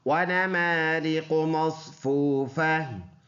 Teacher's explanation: پر ادا ہونے والا حرف ہے، اور یہ واو مدہ ہے، واو ساکن سے پہلے پیش ہے، تو ایک الف کے اندازے سے لمبا کریں گے